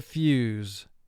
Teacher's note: its first long sound u which is the y sound combined with the oo sound